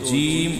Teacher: جیم کا مخرج زبان اور تالو کا درمیانی حصہ، یعنی جب ہم زبان کے درمیانی حصے کو اس کے مقابل اوپر کے تالو سے لگاتے ہیں تو جیم ادا ہوتا ہے۔